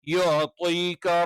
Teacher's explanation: യ നാവിന്റെ മദ്യം മേലെ അണ്ണാക്കിൽ ടച്ച് ചെയ്തുകൊണ്ടാണ്